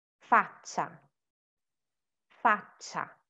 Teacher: Luce, faccia, and cinque have that TS, CH kind of sound, and it's because there is the C plus I or E. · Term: sweet sound